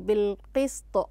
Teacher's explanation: عندما وقفت على الطاء قلقلتها لأنها أصبحت ساكنة